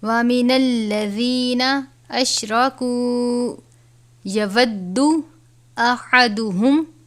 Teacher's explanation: ہا ہے باریک والا ہا یعنی حلق سے ادا کیا جاتا ہے